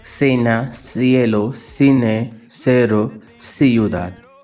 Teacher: Soft C sound in Spanish. When the letter C comes before E or I, it sounds like S in most Latin American Spanish.